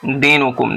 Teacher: یا ساکن سے پہلے زیر ہے اس لیے یا مدہ ہوگا